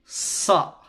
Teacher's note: suara yang keluar dengan tajam dari celah gigi ya dan juga celah lidah kita yang paling ujung. Jadi suara menajam. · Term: safir